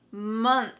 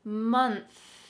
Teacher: Notice what my tongue is doing at the end of this word. It's out between my teeth, and there's some lovely air streaming out. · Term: TH at the end